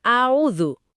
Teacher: Huruf ain-nya kadang jadi kayak hamzah. Bunyinya a'udzu.